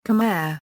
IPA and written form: kəˈmɛər (Khmer)